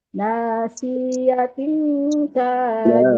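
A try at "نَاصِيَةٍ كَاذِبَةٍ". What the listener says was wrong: ناصية nggak ada yang panjang di sana nasiyatin ka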